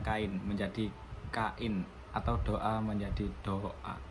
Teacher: Di sini vokal-vokal tersebut tetap mempertahankan identitasnya masing-masing di dalam suku kata yang berbeda. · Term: deretan vokal